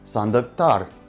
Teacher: The last sound in this word is the voiceless consonant ka, so we will add tar.